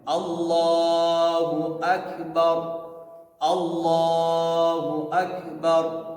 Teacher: را کو ہم موٹا پڑھیں گے، بار کھینچیں گے نہیں